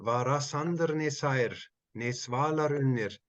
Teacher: It is very likely for ne to be unstressed